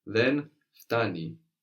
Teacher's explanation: in standard Greek you will hear the N being dropped so it's not incorrect to say then but you'll notice in